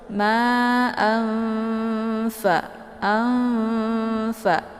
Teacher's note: Jadi cara bacanya itu tinggal disamarkan tanwinnya, langsung siap-siap masuk ke huruf fa. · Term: ikhfa awsat